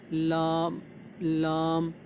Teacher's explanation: लाम जो है ज़बान की नोक और ऊपर वाले दांतों के जड़, वहाँ से जो है लाम निकलता है।